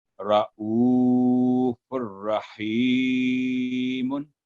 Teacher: فا پر جو تنوین ہے اس کی آواز جب را کے ساتھ ادغام ہوا تو گنہ کی آواز نہیں آئی